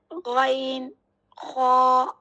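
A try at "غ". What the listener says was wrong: আপনি মুখ গোল করে বলতেছেন খ এটা খ না না এটা হচ্ছে খ এরকম থাকবে মুখ সোজা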